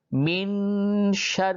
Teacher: را مشددہ پہ زیر ہے اس لیے اس را کو باریک پڑھیں گے